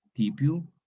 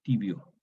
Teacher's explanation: Esta P sorda intervocálica sonoriza en B, U final O, tibio.